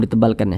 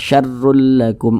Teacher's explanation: huruf ro yang memiliki tanda baca domah begitu juga huruf ro yang memiliki tanda baca dommahtain maka huruf rnya ini dibaca tebal dibaca tkhim sehingga ketika Kita mengucapkannya itu pangkal lisan kita itu naik terangkat